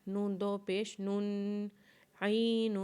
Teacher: اور نون کے اوپر جب تنوین پڑھیں گے تو نون کے اوپر غنہ کریں گے